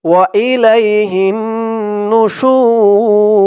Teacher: ওয়া ইলাইহিন নুশুর এই দোয়াটি এখানে শেষ তাই শেষ করার কারণে এই রর উপরে যে পেশটা আছে এটি সাকিন হয়ে গেছে শু বলে 3 আলিফ টান দিয়ে এই রকে ধরেছে